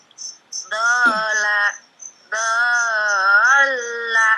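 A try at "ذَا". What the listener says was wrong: Kurang panjang. Dola.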